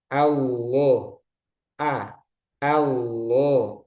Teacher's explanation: a-nya tipis untuk a-nya, tapi lamnya tebal. A, jadi jangan o, tapi a. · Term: tafkhim